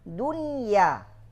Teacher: Atau bercampur suaranya dengan gunnah, sering sekali ini dunya bersih. Ketika pelafasan ya mulai dari awal sampai akhir tidak ada sedikit pun masuk gunnah.